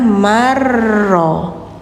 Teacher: Idgham itu artinya memasukkan. Ya, memasukkan satu huruf ke huruf berikutnya. Jadi yang awalnya man jadi mar.